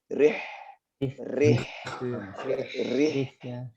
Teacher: Iya, di sini ada H yang berharokat sukun ya, dimatikan. Nah, di sini sangat terasa sekali seharusnya sifat hamasnya dia ya, udara kecilnya itu terasa.